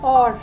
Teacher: Silent H as in or. Here we do not use the sound of H. H is silent over here.